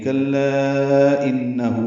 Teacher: ہو مد صلہ 2 حرکات لمبا ہے · ان میں نون مشدد پہ غنہ ہے